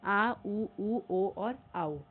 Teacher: पश्च स्वर में यानी कि पीछे का भाग जिन स्वरों के उच्चारण में जीभ के पीछे का भाग आ रहा है आ, उ, उ, ओ और औ।